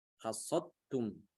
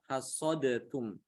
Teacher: Ini berlaku idgham di sini ya. Jadi dalnya hilang, dimasukkan ke dalam ta.